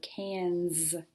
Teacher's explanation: so cans kind of sounds like a z right it's actually an s